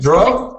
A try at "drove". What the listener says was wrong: So the R was a little bit rolled before.